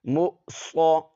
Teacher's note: ہے، واو کو نہیں پڑھنا، یہاں حمزہ بشکل واو ہے تو حمزہ کو جھٹکے کے ساتھ پڑھیں گے، واو نہیں پڑھیں گے